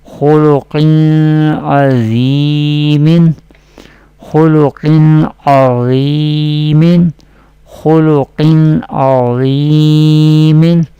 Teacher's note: Halgia letter Ain will be pronounced from the middle part of the throat